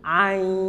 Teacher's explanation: Jadi i-nya, i sama a dipanjangin dulu sampai 6 harokat baru didengungkan